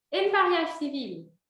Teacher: Aprendendo, a gente pronuncia esse le, mas falando rápido, vira só o L mesmo.